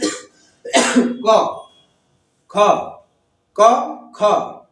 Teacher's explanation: उच्चारण करते समय स्वर तंत्रिया थोड़ा दूर दूर आए, स्वर तंत्रिया दूर दूर रहती है तथा वायु स्वर तंत्रियों में बिना कंपन के निकल जाती है। जो क के साथ अ आ रहा है उसको बोलते वक्त जो कंपन कर रही है वो कंपन नहीं करेगी, बिना कंपन के ही निकल जाएगी।